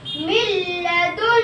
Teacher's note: کے دو حرفوں میں سے لام آیا ہوا ہے اس لیے نون ساکن ادغام بلا غنہ کے حرف سے مل کر جلد پڑھا جائے گا نہ کھینچے گا نہ غنہ ہوگا